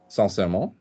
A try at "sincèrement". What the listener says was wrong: Feel it. Don't say it neutrally. Honestly. Seriously. Sincèrement. Sincèrement. Sincèrement. Feel it. Attach it to your soul. Don't attach it to an English word, right?